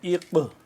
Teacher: اس کو ہم قلقلہ کریں گے اور قاف کو موٹا بھی کریں گے